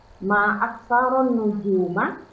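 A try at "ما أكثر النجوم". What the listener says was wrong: Intonasinya salah. ditinggikan. Nujuma. Naik. Kalau nujuma, itu pertanyaan. Aksaron nujuma. Ma aksaron nujuma. Ma. Naik. Ma. Kalau pertanyaan, ma. Tuh, bedanya.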